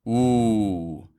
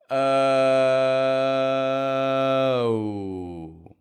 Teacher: glide on to the end of that so this means that we start with a strong uh and we finish by bringing the corners of your lips inwards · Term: w glide